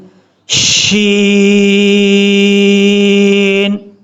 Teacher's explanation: شین کو پڑھنے کے لیے آواز پھیلے گی ، شین، صاد، ضاد، طا، ظا، عین، غین، فا، فا کو